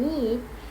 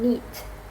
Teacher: the E sound in need is longer than in neat